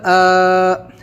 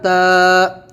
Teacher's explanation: یہ خالی ہے، اس کے اوپر کوئی حرکت نہیں ہے، اس سے پہلے حرکت ہے، تو جب الف سے پہلے زبر ہوگا تو ہم اس کو تھوڑا کھینچ کر پڑھیں گے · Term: حروف مدہ